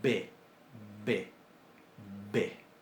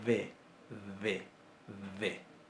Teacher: se va a pronunciar como fricativa labiodental sonora